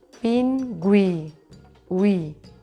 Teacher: És un diftong creixent perquè va de dèbil a fort.